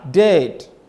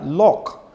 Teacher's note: When you say dead, your tone is high. Dead. When you say lock, your tone is high.